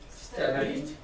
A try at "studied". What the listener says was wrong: No T.